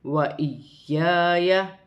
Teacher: یا مشدد ہے، جماؤں کے ساتھ ادا کیا جائے گا، الف مدہ بھی بن رہی ہے، ایک الف کی مقدار کھینچ کر پڑھا جائے گا